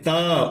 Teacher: त ऊपर वाले दांतों पे लगे, ठीक पीछे।